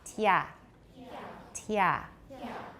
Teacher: The first one, this is a palatal stop, a voiceless palatal stop. Yeah. Yeah, like T, not K.